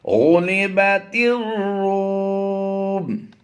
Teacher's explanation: ये अलिफ और लाम साइलेंट रहेंगे, ता राज़े तिर की आवाज देंगे।